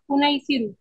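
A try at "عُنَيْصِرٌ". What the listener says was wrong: उन्नीस सिरुन, आखिरी जो सीगा है ना उसमें तनवीन आ जाएगी, उन्नीस सिरुन।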